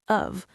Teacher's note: The T and out becomes a D, out, and the of is just a schwa sound